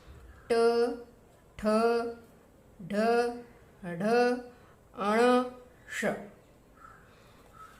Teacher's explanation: ये जो श है उसका उच्चारण स्थान जो है वो मूर्धा से होता है